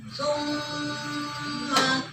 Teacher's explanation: Kalau mim di tasimah namanya gunah. Nah, jadi didengung itu kadang dua harakat sampai ada yang tiga harakat ya